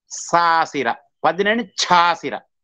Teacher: ಈ ಸಾಸಿರ ಎಂಬುದರ ಹಿಂದೆ ಯಲರಹಿತ ವ್ಯಂಜನ ಇದ್ದಾಗ ಸಕಾರ ಛಕಾರವಾಗಿ ಪರಿವರ್ತಿತವಾಗುತ್ತದೆ, ನಿಯತವಾಗಿ ಆಗುತ್ತದೆ. ಅದಕ್ಕೆ ಬಹುಳತೆ ಎಂಬಂತಹದ್ದಿಲ್ಲ, ನಿಯತವಾಗಿ ಆಗ್ತದೆ ಎಂಬಂತಹದ್ದನ್ನು ಇಲ್ಲಿ ಹೇಳ್ತಾನೆ. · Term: ಛಕಾರ ಮಹಾಪ್ರಾಣ